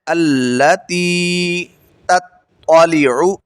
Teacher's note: پہلا تا باریک ہے، دوسرا تا موٹا ہے